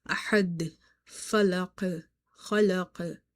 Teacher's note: So there is a qalqala which is very audible.